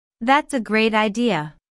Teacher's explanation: notice the emphasis on great